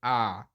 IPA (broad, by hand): ɐ